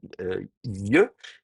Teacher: pour faire la consonne IE, qui est donc une semi-consonne, une semi-voyelle, il faut faire un peu glisser la langue sur le palais, hein, donc IE, et donc ça va faire, au lieu de faire Neriyahu, vous voyez, le IE, le phénomène de glissement va facilement s'accentuer.